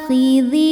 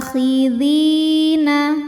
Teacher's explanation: A hukumnya adalah mad badal karena ada alif dengan harakat fathah panjang. Alif jika berharakat ini adalah hamzah.